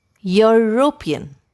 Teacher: the word european starts with the sound of the letter y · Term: y sound